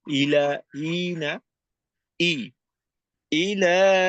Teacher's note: শুরুতে হামজা আসছে একটু জোরলোভাবেই শুরু হবে